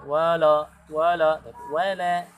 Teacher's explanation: la ini hurufnya sifatnya adalah tipis, istifal. Maka dia tidak boleh menjadi tebal.